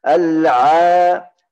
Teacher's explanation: Harus makhraj. Keluar huruf ain dari tengah lidah.